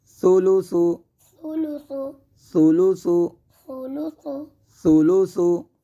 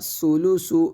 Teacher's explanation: یہاں پہ ہم ثا کی آواز کو بغیر سیٹی کے ساتھ ادا کریں گے، اس میں سیٹی کو پیدا نہیں ہونے دیں گے. اگر ہم اس کو سیٹی کے ساتھ پڑھیں گے تو یہ بنے گا سولوسو، یعنی کہ سین کی آواز پیدا ہو جائے گی.